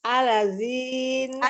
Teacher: dza ujung lidah bertemu dengan ujung gigi seri atas jadi lidahnya keluarin sedikit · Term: huruf dza